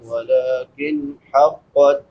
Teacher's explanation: نون ساکن کے بعد حلقی میں سے ہا ہے، تو یہاں پہ اظہار ہوگا. اظہار یعنی حرف کو ظاہر کر کے پڑھنا